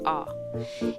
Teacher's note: it's in between ah and o so it's not really that open